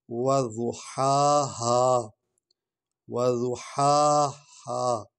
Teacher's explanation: پہلی جو ہا ہے اس کو حلق سے نکالیں گے، دوسری جو ہا ہے اس کو سینے سے نکالیں گے